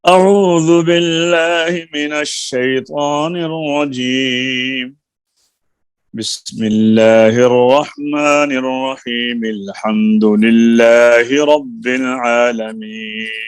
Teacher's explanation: تعوذ کو بسملہ سے علیحدہ کیا اور بسملہ کو آگے سورت سے ملایا. اسے کہتے ہیں فصل اول وصل ثانی، پہلے کو دوسرے سے علیحدہ رکھنا.